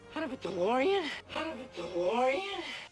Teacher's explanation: when we have the T sound between two vowel sounds, the T becomes a soft D.